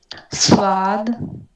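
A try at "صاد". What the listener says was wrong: स्वाद नहीं, स्वाद। ये है स्वाद, आप कर रही हैं क्या, स्वाद। तो वाव नहीं है इसमें, ये है।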